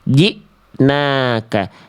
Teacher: Yang ada hamzah sukunnya setelah huruf jim. Maka jimnya kan kayak dihentak ya.